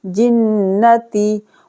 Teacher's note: نون پر غنہ ہو جائے گا، تشدید ہے